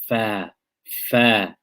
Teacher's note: Remember we talked about the makhraj of fa was what? It was using the wet part of the inside of the bottom lip when it touches the bottom edge of the top front teeth.